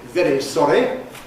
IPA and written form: ˈveɾi ˈsɒɾi (very sorry)